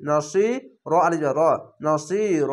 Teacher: জের পাশে ইয়া সাকিন এক আলিফ টেনে পড়বেন।